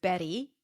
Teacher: flap T is the sound when the T is between two vowels, like in the word Betty